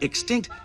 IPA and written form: ɪkˈstɪŋkt (Extinct)